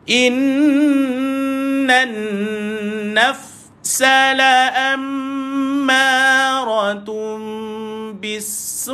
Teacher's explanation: Ataupun senang cerita ada tanda ombak. Maka tuan-tuan matikan huruf hamzah di hujung. Letak huruf K.